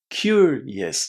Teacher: When you say curious, you need to connect cure and yes. The yes is a little bit shorter than the normal standard yes.